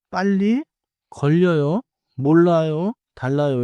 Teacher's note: In English, two 리을 sounds make a clear held L-like sound. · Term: doubled 리을리을